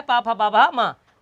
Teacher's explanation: इसमें ना कंठ का काम, ना तालु का काम, ना जीभ का काम, ना दांत का काम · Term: ओष्ठ